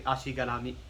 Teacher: the first syllable is almost kind of blurred in, as is garami. Like you're kind of rushing the first syllable.